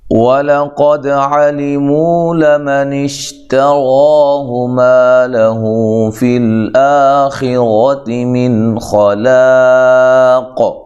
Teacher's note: لام کو باریک پڑھنا ہے، قاف کو موٹا، دال پہ قلقلہ کرنا ہے